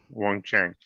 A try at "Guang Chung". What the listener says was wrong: I thought it was Guang Chung, not Chang.